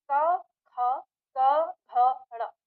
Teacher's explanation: पहला और दूसरा क ख, तो उसमें न के बराबर कंपन है, और तीसरा चौथा पांचवा उसमें कंपन ज्यादा हो जाता है